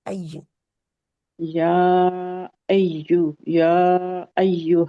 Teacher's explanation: या को तो पहले लंबा करेंगे क्योंकि मद के बाद हमजा आ रहा है